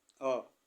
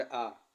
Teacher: अ के अपेक्षा आ में दोगना समय लगता है।